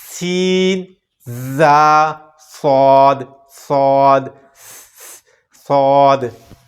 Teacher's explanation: ان میں سیٹی پیدا ہوگی، خوب سیٹی یہاں ہم نے ظاہر کرنی ہے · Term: حروف صفیریہ